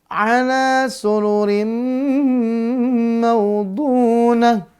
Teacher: Idgham bi gunnah. Apa idgham bi gunnah? Masuk dengan dengung. · Dengungnya 2-3 harokat ya. Nih, jelasnya dengung semuanya ya.